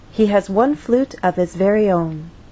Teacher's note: so the overall pattern stays the same till the end and on that final content word our voice will glide down